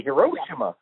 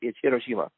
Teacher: But the thing about English-speaking people I've noticed over the years is that for some reason English speakers always pronounce the middle syllable the most